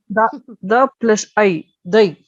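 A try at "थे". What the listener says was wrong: They. The Mahaprana has to be heard clearly. They.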